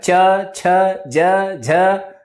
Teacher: च में देखो तालु आ रहा है